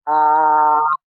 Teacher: इसके उच्चारण में मुख द्वार पूरा खुलता है, पूरा खुलता है। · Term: विवृत स्वर